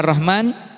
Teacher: lam yang ada tapi tidak dibaca, berarti idgham syamsiyah